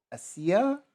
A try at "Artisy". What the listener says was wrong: There's no A at the end, it's just artisy. Artisy